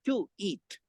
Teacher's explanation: it sounds like there is a w in between · a w in between and that is why this question that in the transition the semi vowel is W not Y · And in that one, U of two and E of eat, create together with the help of other sounds, tweet. And it sounds like there is a wa in between